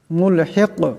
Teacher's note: শেষে কাফ আছে, কাফ সাকিন হয়ে গেলে কলকলা হবে, মুলহিক এমন হবে।